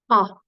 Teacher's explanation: our biggest vowel sound as far as the shape of our mouth and our jaw being the most open